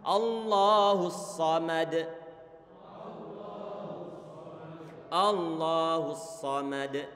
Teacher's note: di saat mengucapkan dhammah huruf ha monyong, huruf sad sudah dalam keadaan normal